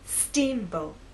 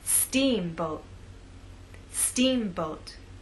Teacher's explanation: Now, when you say the word, I want you to think about making the first part at a higher pitch. So our voice will be higher at the beginning and lower in the second part. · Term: word stress